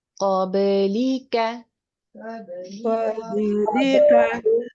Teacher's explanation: لفظ قبلِکَ میں دو قاف ہیں، پہلا قاف پر ہے موٹا کر کے پڑھیے اور آخری کاف باریک ہے باریک کر کے پڑھیے، اور با ساکن حالت میں ہے تو یہ حروف قلقلہ میں سے ہے، اس پہ قلقلہ کیجیے